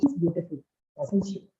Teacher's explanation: You don't raise your pitch, right? No rising pitch. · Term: falling tone